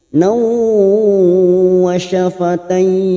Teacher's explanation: fathah tanwin bertemu waw, idgham bi gunnah, siap masuk dan mendengung, masuk ke huruf waw